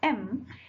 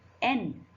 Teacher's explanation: see my lips are touching M, but when I say N, like N, my mouth is open and my tongue is lifting upward